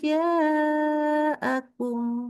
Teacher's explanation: Kemudian hijaakum tidak boleh dibaca dua harakat tidak boleh sama sekali di seluruh mazhab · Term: mad wajib muttasil